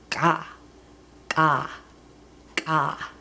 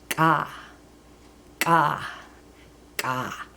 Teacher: So in Maidu, starting with the special K, Maidu has 2 Ks, a regular K like English, and it has this special or glottalized K that has the little mark above it. The special K is pronounced farther back in your throat, like a hard G. Maidu doesn't have a G, so it's sort of like a G sound, G, but with a little extra spit.